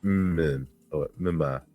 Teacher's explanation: The N assimilates to the following M.